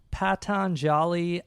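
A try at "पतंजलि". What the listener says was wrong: It's like you got it not wrong, but you did it so slow because of your fear. It's Patanjali.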